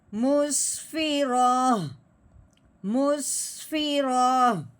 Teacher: وقف کی صورت میں آخر والا جو حرف ہے اس کو ہم نے کیا کرنا ہے, ساکن کرنا ہے, یعنی کہ اس کو جو تا ہے اس کو پہلے گرانا ہے, پھر ہا کو ساکن کرنا ہے, کیونکہ اس کو کہتے ہیں گولتا. جب بھی گولتا ہو وقف کی صورت میں اس کا تا گرا دیتے ہیں, پیچھے خالی ہا رہ جاتی ہے, تو اس ہا کو ساکن کرتے ہوئے اس کی آواز نکالتے ہیں.